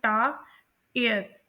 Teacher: आर जो है वो फ्यूज कर जाता है वॉवल साउंड के साथ, और इस तरह से only टू vowel positions are heard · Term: डिफ्थोंग